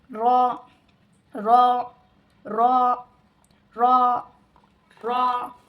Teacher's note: جو اپنے زبان کے کنارے ہوتے ہیں اسے سامنے کے 4 دانتوں کے مسوڑوں پہ لگانا اور اس کو پڑھنا، جیسے کہ را، سامنے کے جو 4 دانتیں ہیں جو ان کے مسوڑے ہیں، زبان کی نوک اس پر لگائیے اور پڑھیے را را را را را، ٹھیک ہے۔